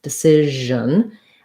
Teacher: I just have a syllabic N at the end. So I might have a little bit of a schwa sound, a little bit of an undecision, but not much vowel there at all.